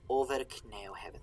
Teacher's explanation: Remember that F between vowels? Like in over, it's a V sound.